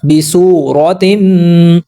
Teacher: बिसूरतिम, वाव साकिन से पहले पेश है तो वाव हुरूफ मद्दा, पीछे पढ़ चुके हैं, पेश को 2 हरकत के बराबर लंबा करेंगे। यहाँ पर रा को हम पुर पढ़ेंगे, ज़बर और पेश होता है तो रा को पुर पढ़ते हैं।